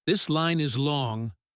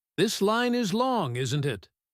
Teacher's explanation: If she says, "This line is long," with her voice going down at the end, she might just be complaining to herself. · with her voice going up at the end, she is definitely talking to you. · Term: falling intonation, rising intonation